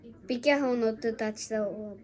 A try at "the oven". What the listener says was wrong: the ▁oven. ▁ザ じ ゃ な く て ▁D。 D ▁で も ▁Z ▁で も い い け ど 。 こ れ も そ ん な に 強 く 発 音 し な く て い い か ら ね 。